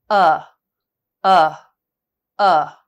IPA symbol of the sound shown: ʌ